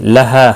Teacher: ہا الف مدہ ہے، ایک الف کے برابر کھینچ کر پڑھیں گے